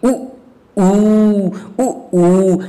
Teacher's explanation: उ ऊ ये पीछे की बात कर रहा है यानी ये पश्च स्वर के अंतर्गत आता है